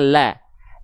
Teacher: Kalau dia hurufnya tebal dia akan terdengar seperti vokal o. Lam di sini kita baca tipis maka lamnya dibaca la